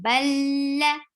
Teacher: This is idgham without gunna. You're not keeping your sound in your nose here. And ba is attached with lam.